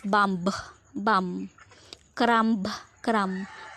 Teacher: Pansinin nyo yung sinabi ko dun sa spelling, yung letter B, naging bum lang siya, tapos yung cramb, natanggal yung B, and the rule is delete a word final B when it occurs after an M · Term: Delation